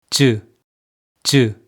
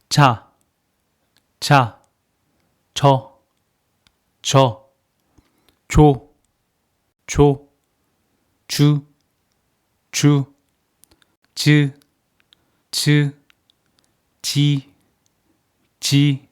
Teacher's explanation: When you make jiud sound, middle of your tongue should touch the palate briefly and let air out as your tongue moves away from your palate.